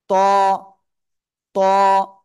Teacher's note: জিহ্বার আগা উপরে দুই দাঁতের গোড়ায় লাগাবো লাগিয়ে মোটা আওয়াজে পড়বো আর এক আলিফ টেনে পড়বো ঠিক আছে আমি আসলে